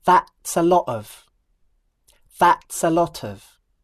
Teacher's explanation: If you listen carefully, you'll notice that the first time she says that's a lot of, she connects lot to of using a glottal stop. But when she repeats herself, she connects the words in the proper way.